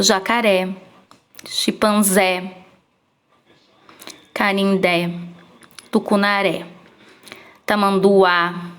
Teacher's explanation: todos os nomes os animais dessa placa são oxítonas por quê Porque a última sílaba é a mais forte